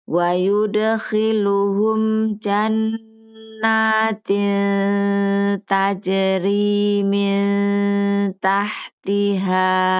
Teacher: Nun bertemu dengan ta tidak diidhar. Jadi ujung lidahnya tidak menempel langsung ke gusi tapi dijauhkan lagi ke siap-siap ke huruf ta